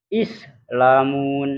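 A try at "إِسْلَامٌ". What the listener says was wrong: Panjang lahnya.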